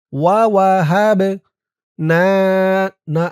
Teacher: বা কলকলার হরফ ধাক্কা দিতে হবে